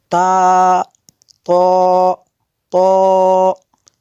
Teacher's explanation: زبان کی نوک اور اوپر کے دانتوں کی جڑ سے یہ ادا ہوتے ہیں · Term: حروف نطعیہ